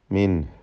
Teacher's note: സാക്കിനാനൂൻ ഇൽഹാർ ഹൽക്കിയാണ്, മണിക്കാതെ വെളിവാക്കുക.